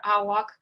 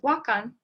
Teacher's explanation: awak alternates with wakan with ah being deleted when it is pre-tonic in the suffix form